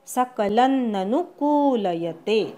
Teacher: सकलन लवरच्या अनुस्वाराचा अर्धा न म्हणायचा. सकलन ननु नु ऱ्हस्व आणि कू दीर्घ. सकलन्ननुकूलयते असं म्हणायचं. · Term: ऱ्हस्व दीर्घ